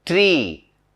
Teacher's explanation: The front of the tongue is raised. It is raised to a height slightly below the close position.